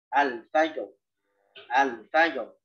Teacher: Jadi setelah jim, kita langsung mengembalikan makhraj kepada makhraj ro.